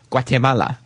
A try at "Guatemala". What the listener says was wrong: You can barely pronounce the G. Guatemala.